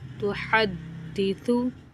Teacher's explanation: दाल मुशद्दद हर्फ है, थोड़ा रुक कर पढ़ेंगे।